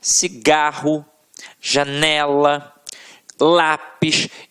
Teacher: a sílaba que a gente proferiu com mais força sempre esteve na penúltima sílaba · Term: paroxítonas